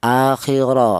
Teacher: Jadi kapan ada huruf ra yang berharakat fathah, maka cara bacanya dibaca tebal yaitu menggunakan lidah bagian belakang diangkat ke atas